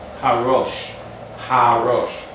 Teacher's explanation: lengthen the sound of that ha, lengthening that ah sound to separate those sounds of the special letters